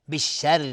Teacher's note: را اینجا ترقیق است چون کسره داره